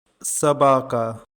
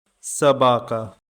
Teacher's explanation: Stress is on the second syllable.